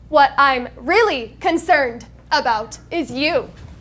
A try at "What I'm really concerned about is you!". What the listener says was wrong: This is an exclamation point. So it's an exclamation point. So however big, loud you were before, this is 10x that. An exclamation point is, that is a signal.